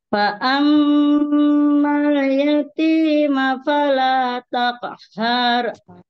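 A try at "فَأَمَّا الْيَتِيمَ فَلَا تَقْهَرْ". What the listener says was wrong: Masih ada haru. Nah, jangan terlalu kepanjangan, ya. Fala taqharu.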